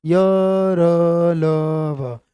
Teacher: इन्हें मैं ऐसे बोलूं, देखो एक साथ चारों को बोलूं, य र ल व, जो गले के अंदर आसपास बोले जाते हैं, वो कंपन पैदा होती है उनमें, गले में ही कंपन करते हुए निकलते हैं बाहर। तो सघोष माने कंपन सहित आवाज निकलेगी, और अघोष जिसमें कंपन ना हो।